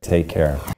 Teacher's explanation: do you hear how the music or the intonation Falls after the final stressed word take care that's a falling intonation pattern this indicates a statement